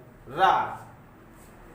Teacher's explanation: प्रकंपित व्यंजन रा। रा का उच्चारण करने में जिह्वा में कंपन होता है, ये प्रकंपित है रा।